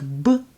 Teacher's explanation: try to avoid a strong burst of air after the sound